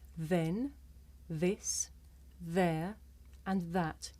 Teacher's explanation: sticks out just a little bit as i say it watch the sound comes from between my tongue and my top teeth